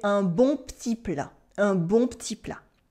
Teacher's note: We often cut the E in real everyday French